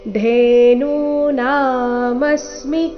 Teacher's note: ಧೇ ಸಹ ಮಹಾಪ್ರಾಣ ದೀರ್ಘ ಇದೆ